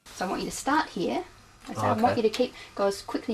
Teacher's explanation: Did you hear the falling tone at the end?